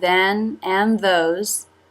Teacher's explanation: the tongue tip comes through quickly to make than and those. Than is very short there.